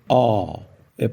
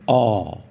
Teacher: E a pronúncia curta dessa vogal é ó. Parece um A, mas mais fechado, então fica ó.